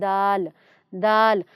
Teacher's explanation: دال کی آواز سخت اور باریک ہوتی ہے، اس کی آواز میں تھوڑی سی سختی لیکن موٹا نہیں ہوتا، اس کے ادا کرنے میں ہم تھوڑا اس کو باریک ادا کرتے ہیں۔